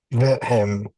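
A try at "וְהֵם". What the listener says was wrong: Is it vehem or vehem? If you say vehem, you're accenting the first syllable, vehem. And you don't want to do that because there's a shawa. Because there's a schwa, is telling you accent the next syllable.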